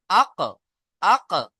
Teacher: জিভের গোড়া তার বরাবর উপরে তালুর সাথে লেগে উচ্চারণ হয় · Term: কফ